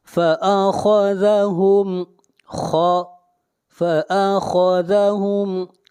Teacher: یہاں پر میم کو ظاہر کر کے پڑھیں گے، یہاں پر اظہار شفوی ہوگا، اس لیے کہ میم ساکن کے بعد نہ میم ہے اور نہ با ہے، فأخذہم، فأخذہم، خا کو موٹا پڑھیں گے، خا حروف مستعلیہ میں سے ہے، ہم، یہاں پر میم کو ظاہر کر کے پڑھیں گے، اس لیے کہ میم ساکن کے بعد نہ میم ہے اور نہ با ہے۔